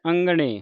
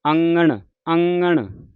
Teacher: ਜੀ ਧਿਆਨ ਰੱਖਣਾ ਇਹ ਲੱਗਾ ਨੱਕ ਦੇ ਵਿੱਚ ਹਮੇਸ਼ਾ ਆਵਾਜ ਕੱਢਦਾ ਗਲੇ ਤੋਂ ਲੈ ਕੇ ਨੱਕ ਵਿੱਚ ਆਵਾਜ ਆਉਂਦੀ ਹੈ